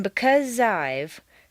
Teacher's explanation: the z sound at the end of because and the I sound of I blend together smoothly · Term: Liaisons